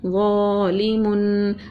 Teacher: غو کو ایک الف کے برابر کھینچا کیونکہ یہ الف مدہ ہے ، لام کو نرمی سے پڑھا، زیر ہے اور دو پیش